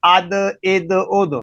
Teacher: حمزہ دال زبر اد، حمزہ دال، دال تو بریک ہے لیکن جب اد پڑھ رہے ہیں تو آواز بھاری ہو رہی ہے، قلقلہ ہو رہا ہے، اس لیے تا اور دال کا مخرج تو ایک ہے لیکن یہ حروف قلقلہ میں سے ہے، اس لیے آواز موٹی ہو رہی ہے